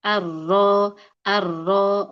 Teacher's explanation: Kalau huruf ro itu punggung ujung lidah. Jadi ujung lidahnya itu lebih naik ke dalam dibandingin huruf nun. Jadi kurang lebihnya kalau ini huruf ro, ya kalau ini huruf nun.